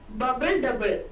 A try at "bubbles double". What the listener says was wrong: It's bubbles, not bubble. Bubbles.